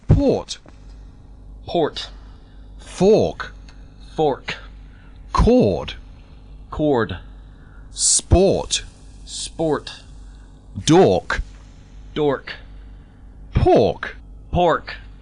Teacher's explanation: when there is a letter r American English speakers make this R sound quite prominent